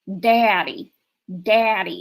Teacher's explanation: where I come from it would be more like Daddy Daddy it'd be real like wide and um slow here it's it's really tight and fast I worked at a